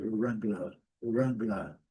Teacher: no inglês britânico não, o R não é pronunciado